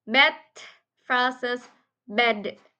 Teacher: Both consonants are alveolar plosive, meaning their tip or breadth of the tongue touches the alveolar or teeth ridge